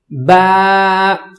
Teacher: الف با کو پڑھیں گے دونوں ہونٹوں کو ملا کر، پھر آواز نکالیں گے۔